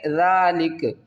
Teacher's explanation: وقف کی صورت میں کاف کو ساکن کریں گے